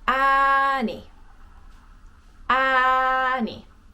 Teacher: stay on the a little longer just because there's two of them